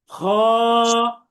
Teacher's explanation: হলকের শেষ ভাগ হতে খ হরফটি উচ্চারিত হবে